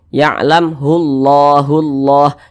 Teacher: Nah, di depannya ada lafaz Allah, maka lafaz Allah ini dibaca tebal, dibaca tabkhim